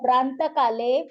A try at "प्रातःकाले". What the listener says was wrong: अनुस्वार नाहीय त्याच्यावरती अनुस्वार नाहीये